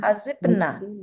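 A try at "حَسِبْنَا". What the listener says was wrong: Iya, nanti hasibna dipanjangin dikit biar membedakan. Ya, membedakan antara hunna dengan dengan dengan nahnu.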